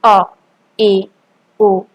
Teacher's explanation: फिर अर्ध विवृत, जिन स्वरों के उच्चारण में मुख द्वार आधा खुलता है